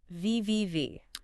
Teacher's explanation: I feel a vibration at the start.